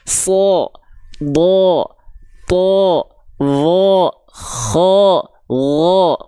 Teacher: kalau huruf tebal, ketika dia berharokat fathah, maka dia dibaca dengan vokal O terdengarnya